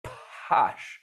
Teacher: her lips are parting first and then she's waiting a while before her vocal cords start folding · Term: a long posh, voice onset time